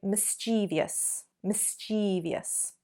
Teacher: So actually we're adding an extra syllable there and we're elongating that E sound.